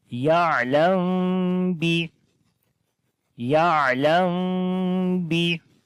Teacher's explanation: On this meem, after the meem sakin, the next letter is ba right now. So we make ikhfa shafawi here as we hide the sound of meem into our nose. Because after the meem sakin, if ba comes, so we make ikhfa shafawi there as we say ya'lam bi.